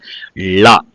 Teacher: லாவ சொல்லும் பொழுது பற்களுடைய அடிப்பகுதியை நாக்கு தொடணும் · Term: லகரம்